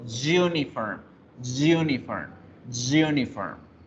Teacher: la palabra uniforme, su pronunciación empieza con una J, un sonido de J, que el sonido de la J en inglés es una Y, Y.